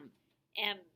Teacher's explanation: the sounds m and n are made through your nose · when you hold your nose you cannot make these sounds because the sound is made in the nose they're called nasal sounds so say m now plug your nose